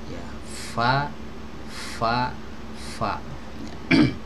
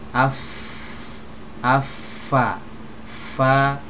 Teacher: Bibir bawahnya baru kelihatan ya bagian bibir yang basah yang didalamnya itu nah ini ditempelkan ke ujung gigi seri atas Va vag kemudian harus disertai dengan aliran Hai suara dan aliran